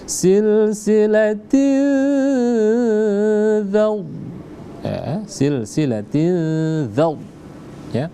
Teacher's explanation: Silsilatin dzaw, jadi kita baca gunnah. Gunnah dengan menahan selama 2 harakat. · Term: ikhfa